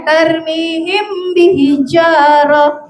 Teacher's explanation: Dimasukkan dan terasa getar di hidung. Itu namanya ikhfa syafawi.